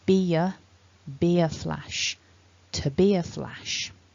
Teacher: we've got this linking ye sound between the words